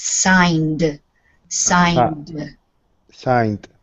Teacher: it's not signed for both of you because n is like the n Sound is a voice sound it sounds like a d on the end · the D sound on the end is soft but it is only one syllable we don't add a syllable